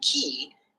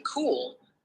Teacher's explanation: the way we articulate the cook sound in key is different from the cook sound in cool due to the influence of the following vowel sounds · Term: coarticulation